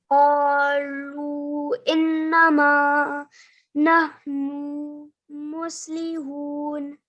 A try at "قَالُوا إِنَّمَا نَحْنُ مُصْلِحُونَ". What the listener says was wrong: Do you remember how many seconds we recite this for? This is 3 to 5 seconds. So just try it once more and just make sure you recite this sound. So this is lu for at least 3 seconds.